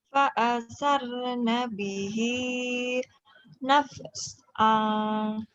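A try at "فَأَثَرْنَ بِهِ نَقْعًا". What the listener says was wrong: fasarna bihi bukan naf ya. Kol-kolah sugro.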